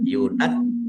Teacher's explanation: Jimnya ada tasdidnya, dibaca double, ditekan biar tampak doublenya.